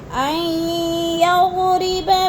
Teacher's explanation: حمزہ کو یا کے ساتھ ملا کر ادغام کرنا ہے، درمیان والا نون ساکن نہیں پڑھا جائے گا